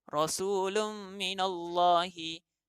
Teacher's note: Jadi nun mati dalam tanwin ni dimasukkan ke dalam mim. Jadi bunyi nun mati langsung tiada. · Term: idgham